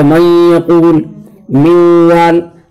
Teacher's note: من وال کے اندر جو ہے نون کی صفت جو ہے غنہ باقی ہے، اس وجہ سے اس کو کہا جائے گا ادغام ناقص.